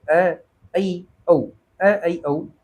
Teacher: विवृत से कम और अर्ध संवृत से थोड़ा अधिक मुख खुलता है। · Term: अर्ध विवृत